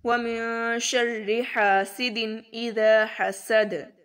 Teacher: حسد میں دال پر قلقلہ کریں گے.